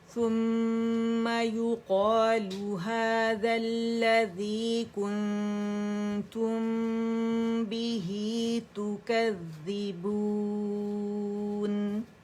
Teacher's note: یہاں ثم میں میم حرف غنہ مشدد ہے، ٹھیک ہے، تو یہاں پہ ہم نے اسے ٹائم دینا ہے، 2 ڈھائی 3 تک آواز جائے گی۔ ہاذا میں الف مدہ بن رہا ہے، ٹھیک ہے، دونوں جگہ یہاں پر بھی، اور الذی میں جمع دیں گے، لام مشدد ہے، اور یہاں پہ کنتم پہ اخفاء حقیقی ہو رہا ہے، اور جہاں میم سکون کے بعد با آ رہا ہے تو یہاں اخفاء شفوی ہو رہا ہے، ٹھیک ہے۔